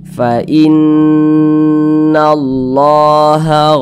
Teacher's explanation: adalah gunah musyaddadah gunah musyaddadah caraaca BAC itu ya digunahkan n digunahkan itu didengungkan jadi suaranya itu kita tahan kita panjangkan sejenak